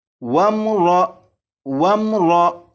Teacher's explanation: اور اس میم ساکن پر کلکلہ بھی نہیں کریں گے، یعنی اس طرح سے نہیں پڑھیں گے، وم وم وم، اس طرح بھی نہیں پڑھیں گے، بلکہ اس میم ساکن کو اس طرح پڑھیں گے کہ جیسے ہی میم ساکن پر پہنچیں تو آواز ختم اور آگے را کی آواز شروع ہو جائے